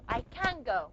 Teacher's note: The velar sound is going to affect the pronunciation of the N here, the nasal N. The nasal N is going to become a velar nasal.